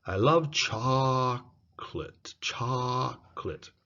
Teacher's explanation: the cha is longer the co and let are shrunk